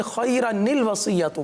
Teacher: माकबल मिलाने की सूरत में, यानी पिछले कलमे से मिलाने की सूरत में ये अलिफ गिर जाता है। हम इसको खैरा अल वसीयतु नहीं पढ़ते।